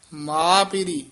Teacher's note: ਮਿਲੰਦੜੋ ਮਾ ਪਿਰੀ ਮਾ ਪਿਰੀ ਪਾਠ ਸਬੰਧਕ ਹੈ ਮਾ ਨਹੀਂ ਕਹਿਣਾ ਨਾਸਕੀ ਨਹੀਂ ਬੋਲਣਾ ਮਾ ਪਿਰੀ ਉਚਾਰਨ ਕਰਨਾ